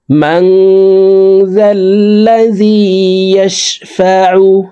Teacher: আইন হরফকে হলকের মধ্যখান থেকে উচ্চারণ করব।